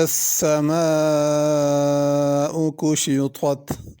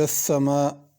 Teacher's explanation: اذا السماء اس میں سین ہے، ثا نہیں پڑھنا، صاد نہیں پڑھنا